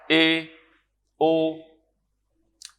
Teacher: اب اے کی جو آواز ہے یہ کس طرف ہے؟ نہ یہ آ کی طرف ہے نہ یہ او کی طرف ہے، ان بٹوین ہے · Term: مجہول